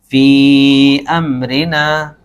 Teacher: حرف مد کے بعد حمزہ دوسرے کلمے میں آ رہا ہے نا، تو یہاں پر مد منفصل ہوگا، ہلکا سا مد آئے گا، ایک چھوٹا سا